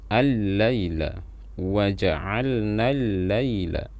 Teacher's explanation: Tapi dalam penulisan mushaf dengan Rasm Utsmani, lamnya dihapuskan dan alif lamnya ditasydidkan. Jadi kita baca seolah-olah hanya ada satu lam yang bertasydid. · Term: alif lam syamsiyah